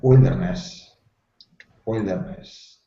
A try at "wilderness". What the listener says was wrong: nice